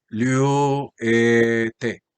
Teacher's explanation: Exactamente, esa epsilon se alarga en una eta y queda así, liu-te, para traducir que vosotros, vuelvo a el concepto soltar, que vosotros soltéis o que vosotros estéis soltando o estéis desatando.